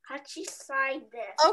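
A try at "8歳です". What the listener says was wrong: Okay, we have to change that one a little bit and you say Hassai. It's easier to say Hassai desu. Hassai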